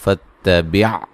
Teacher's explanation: یہاں تا کو موٹا نہیں کرنا ہے، فا کو تا سے ملانا ہے